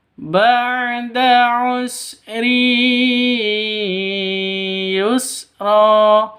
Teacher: Sini ada tanwin bertemu dengan ya. Cara bacanya masuk ke ya disertai dengung dua ketukan. Karena bacaan idgham bighunah. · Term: idgham bi gunnah